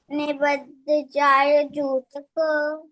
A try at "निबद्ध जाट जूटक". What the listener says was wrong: जाट not जाय निबद्ध जाट जूटक